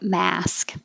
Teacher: the vowel is ah so open a lot